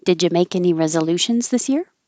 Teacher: It's a yes no question, so it'll go up. And did you can be pushed together and sound like did ya.